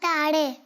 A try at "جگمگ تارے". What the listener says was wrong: تاڑے نہیں ہے جی, دوبارہ بولیں جگمگ تاڑے نہیں ہے, جگمگ تارے.